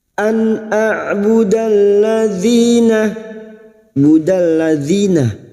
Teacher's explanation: huruf ain yang memiliki sifat tawasud dan jahar